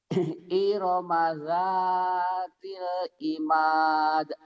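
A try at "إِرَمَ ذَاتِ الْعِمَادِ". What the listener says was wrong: Tinggal dilatih ainnya ya. Irama dzatil Cara melatih ain masih ingat kan? A'ari, assalamualaikum, a'ari, an'amta alaihim. A'ari gitu.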